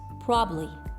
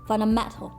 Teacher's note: dropping buh and duh when either is in a middle position in a multi-syllable word